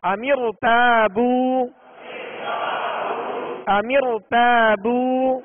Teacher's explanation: دوسرے کلمے میں زیر ہے لہذا اس را کو پور یعنی موٹا کر کے پڑھیں گے